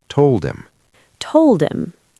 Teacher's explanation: If these words are not stressed, we delete the H.